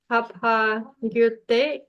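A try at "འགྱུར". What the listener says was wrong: Little prenasal on that. Tapang, gyur.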